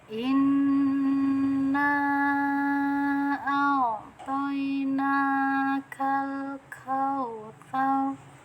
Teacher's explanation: Artinya gunah itu kita berikan dengungan. Nah, cara bacanya kita tekan dulu karena ini ada tasdid nah kemudian didengungkan dengan cara ditahan nah ditahannya bisa 2 harokat atau lebih ya, nah di sini ada hukum bacaan mad jaiz mufasil. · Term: nun gunah